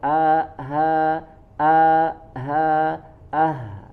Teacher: sempurnakan dari bagian tenggorokan yang paling jauh ya, sama dengan huruf hamzah